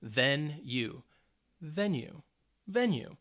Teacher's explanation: or any kind of sports is venue it is a noun it's two syllables and the stress is on the first syllable